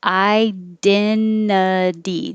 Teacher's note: This last T changes to a D because it's between two vowel sounds, two voiced sounds makes it a D.